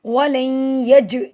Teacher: जीम पे जज़म है तो यहाँ हम कलकला करेंगे, मतलब हिला के पढ़ेंगे, मतलब आवाज़ का पलट के आना